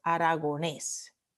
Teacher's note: La última sílaba es tónica.